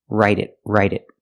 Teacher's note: The T in write changes to a fast D.